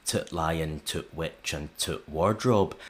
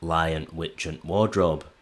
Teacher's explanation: the definite article, which is the in standard English, is written t in Yorkshire, but pronounced as a glottal stop. This is the usual pronunciation for Yorkshire speakers, certainly before a consonant.